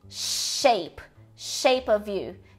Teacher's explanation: Palato alveolar aqui envolve o céu da boca e os alvéolos ao mesmo tempo, mas simplificando, a gente tem o som de shape of you, que é o mesmo som de chuva, igualzinho, tá?